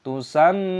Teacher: mim tashdid dibaca sebagai ghunnah, nasal, jadi kita sengaukan · mim tasid, hukumnya dibaca gunna berdengung, maka kita dengungkan